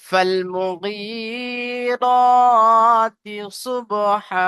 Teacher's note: বার উপরে সাকিন এসছে, সাকিন আলা বা হুরফে কলকলা পাঁচটি অক্ষরের মধ্যে একটি, তাই বাকে কলকলা করে আগের অক্ষরের সাথে মিলিয়ে পড়বো।